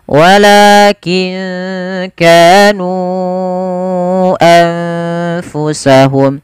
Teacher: kita memanjangkannya sepanjang empat harakat atau lima harakat tidak boleh dikurangi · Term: Mad Jaiz munfasil